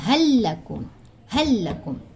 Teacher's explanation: لیکن اگر حل یا بل کے بعد لام آ جائے یا را آ جائے، فار ایگزامپل حل لکم، ٹھیک ہے، تو اب یہ کیا ہوگا؟ یہ لام اس لام کے ساتھ پوری طرح مدغم ہوگا، ادغام ہوگا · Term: ادغام لام ساکینہ